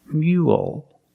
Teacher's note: Finish with a dark L because the L is at the end of the word after a vowel.